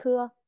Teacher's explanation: Bật hơi mạnh ra mọi người